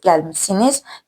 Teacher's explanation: Siz gəlmişsiniz. Burda ş düşə də bilər, düşməyə də bilər. Siz gəlmisiniz, yəni ixtisar oluna bilər.